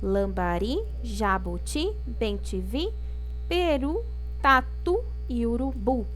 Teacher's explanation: tá vendo que a última sílaba é a mais forte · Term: oxítonas